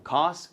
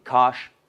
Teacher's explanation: Este es el más fácil de ver porque esta es cas y esta es cash. La versión palatalizada de s es sh.